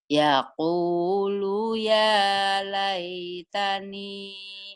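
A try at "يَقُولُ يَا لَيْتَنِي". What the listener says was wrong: Bagus, tapi lu-nya masih ketahan nih, Bu. Jangan yaqulu, kan gak ada yang manjangin. Yaqulu ya.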